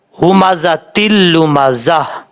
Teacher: Last پہ ہا کا ساؤنڈ آئے گا اگر آپ وقف کریں گے تو۔ اگر آپ وقف نہیں کرتے تو پھر ملا کے پڑھا جائے گا۔